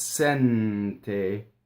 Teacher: the N in sente is with the tip of the tongue, right? Not along the roof of the mouth. So it's sente, right?